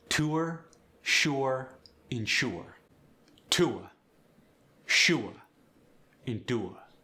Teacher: Or goes to ua.